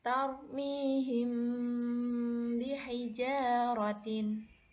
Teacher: Adapun cara membacanya adalah bunyi mim sukun dibaca samar-samar di bibir dan berdengung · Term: ikhfa syafawi